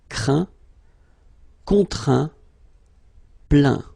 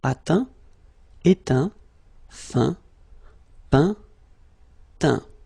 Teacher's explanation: as usual, final T here is not pronounced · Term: final T not pronounced